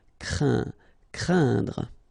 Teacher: keep in mind that it goes in your nose, so you don't hear any N when I pronounce it, and then C plus R will produce the sound cr, crain, craindre. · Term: nasal